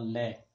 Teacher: यानी हवा का जीभ के दोनों साइड से निकलना ल यानी पाशविक यानी जीभ के दोनों साइड से हवा का निकलना